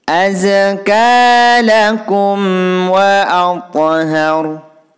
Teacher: Kemudian di sini ada mim sukun bertemu waw, ini juga hukum bacaan idhar syafawi. Cara membacanya harus jelas.